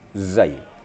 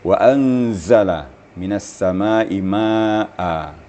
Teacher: ditemukan lidah dengan hujung Gigi tetapi gigi dirapatkan kemudian ada penekanan sedikit zaai di keluarlah theis atau safirnya wa anzala minasama maa